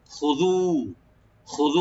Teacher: খাটাকে অবশ্যই রাইট দিবেন, এই গলার শুরু থেকে খ , জালটাকে রাইট দিয়ে পড়বেন সফট হয়ে, খুযু একালে টানবেন জাল,